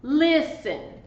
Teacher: The stress is on the first syllable. It is not on this final syllable. So you do not double the consonant.